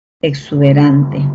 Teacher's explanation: Ahí, ¿cómo es, no? Tengo la E, luego tengo la oclusiva, y luego tengo la sibilante, ¿no? Exuberante.